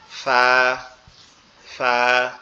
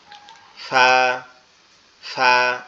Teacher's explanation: ফাটা উচ্চারণ হবে আমাদের উপরের দুই দাঁত নিচের ঠোঁটের পেটের সঙ্গে লাগবে, লেগে উচ্চারিত হবে নরম আওয়াজে